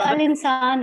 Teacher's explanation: لام کی آواز آ رہی ہے تو حروف قمریہ ہوگی